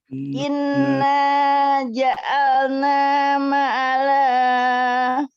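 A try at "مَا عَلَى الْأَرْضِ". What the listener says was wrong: Ma-nya panjangkan. Ikuti sesuai instruksi dari ma ya. Ma'alal ardi.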